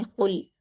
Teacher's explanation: पहली आयत देखिए, क़ाफ पर हरकत जल्द पढ़ेंगे, लाम पर जज्म है, क़ाफ से मिलाकर पढ़ेंगे। क़ुल, क़ाफ को हलक से अदा करेंगे